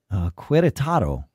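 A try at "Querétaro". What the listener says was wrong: there's that accent over the E.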